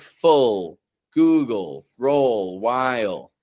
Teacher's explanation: a dark L is an L sound which has a vowel before it and no vowel after it. So words like full, Google, roll, while uh those are dark L's.